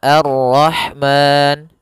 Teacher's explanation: memanjangkan 2 harokat pada lafal ma, boleh juga 4 harokat, dan boleh pula 6 harokat. Maka Ar-Rahman 2 harokat, Ar-Rahman 4 harokat, Ar-Rahman 6 harokat.